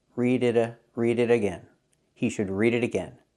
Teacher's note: We hear the T and it pronounces a fast D.